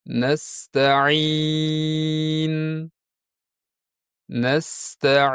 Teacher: To'g'ri talaffuz esa bu ikkalasining o'rtasida bo'lishi kerak. Shunda nun aniq bilinib g'unna ham eshitiladi. Lekin ortiqcha mubolag'asiz va g'unnasini ko'paytirmasdan